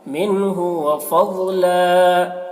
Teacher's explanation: ضاد کو پر پڑھیں گے کیونکہ ضاد حروف مستعلیہ میں سے ہے۔ وفضلا، یہاں پر وقف کر رہے ہیں تو ایک زبر کے ساتھ الف پڑھا جائے گا، وفضلا، اس طرح۔